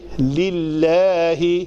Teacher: لام اسم جلالہ پتلا پڑا جائے گا کیونکہ اس کے ماقبل کسرہ ہے